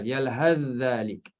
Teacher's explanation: Idghamkan sa, masukkan dalam zal.